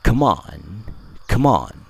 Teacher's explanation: berakhiran dengan huruf M dan diikuti oleh kata on yang diawali oleh suara vowel o maka kedua kata ini bisa kita gabungkan bunyinya